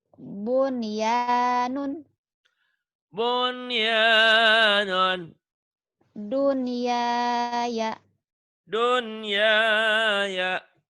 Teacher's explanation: Kalau nun mati ketemu wawu atau ya satu kata, satu kalimat, satu gabungan, maka tidak dibaca idgham, tapi harus dibaca idhar. Itulah disebut idhar mutlak.